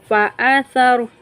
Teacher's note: سا کو ہم نرمی کے ساتھ زبان کی نوک کو اوپر والے دانتوں کے ساتھ نرمی کے ساتھ لگاتے ہوئے سا کا مخرج ادا ہوگا۔